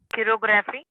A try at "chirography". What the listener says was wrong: किरो नहीं बोलेंगे, किरो नहीं, कायरो।